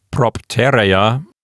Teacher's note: Notice at the beginning of it, there's a stop plus liquid. Now, the letter P is a stop, a voiceless stop to be more specific